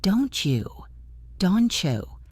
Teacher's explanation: Feel how your tongue moves. Instead of tapping the top of your mouth for the T and then moving down for the Y, you just make one smooth movement in the middle. This is assimilation.